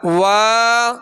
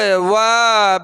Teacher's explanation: واو کے ساتھ الف مدہ ہے، اس کو ایک الف کی مقدار کھینچیں گے